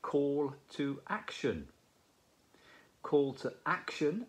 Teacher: notice the stress on the first syllable of action